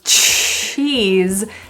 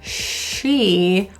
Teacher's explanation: T, and then a sh to it. So cheese has that little T sound, and she, or she's going, has that quiet sh pronunciation, no T.